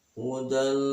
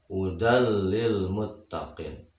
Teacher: Kalau tadi idgham bil gunnah, bisa juga disebut idgham ma'al gunnah. Idgham bila gunnah adalah idgham yang tidak memakai dengung ke hidung